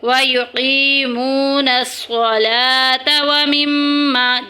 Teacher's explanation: واو ساکن پیچھے پیش، واو مدہ ہو رہا ہے، ان کو تھوڑا تھوڑا کھینچ کے پڑھیں گے